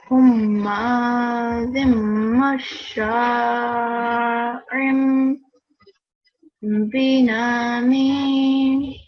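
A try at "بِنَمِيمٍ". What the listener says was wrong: And make this noon a bit shorter because it was too long for just a fatha. Binamim.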